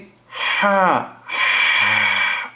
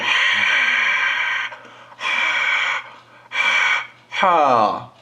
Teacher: গলার মধ্যখান থেকে প্রথমে আপনার বাতাস বাহির হবে